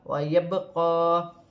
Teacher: یہاں پر با ساکن ہے، با کو قلقلے والے حرف میں سے ہے، تھوڑا قلقلہ پیدا ہوگا